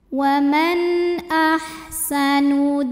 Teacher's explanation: halqi huruf tenggorokan yaitu Hamzah Alif dengan harakat fathah ini hamzahnya maka cara membacanya nun sukun dibaca dengan jelas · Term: izhar halqi